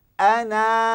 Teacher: kalau kita waqaf, kita kena baca ana, kena baca 2 harakat